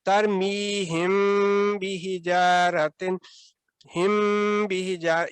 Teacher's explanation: لیکن اگر آپ نے ملا کر پڑھنا ہے تو پھر وہ میم ساکن کا جو قاعدہ ہے کہ اس کے آگے با ہے، تو پھر آپ نے اخفا شوی 2 سیکنڈ تک غنہ پھر آپ نے کرنا ہے، ترمیہم بحجارۃ، ہم بحجار، یہ جو اخفا کی آواز غنہ کی آواز آپ نے یہاں پہ کی، اس کی وجہ یہ لیٹر با ہے۔